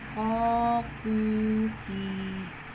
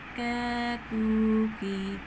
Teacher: قاف زبر الف قا, قاف پیش واو قو, قاف زیر یا قی, قا قو کی. اب یہ دو نقطوں والا جو قاف ہے یہ موٹا پڑھا جائے گا, جو کش والا قاف ہے یہ باریک پڑھا جائے گا. کیف زبر الف کی, کیف پیش واو کو, کیف زیر یا کی, کی کو کی.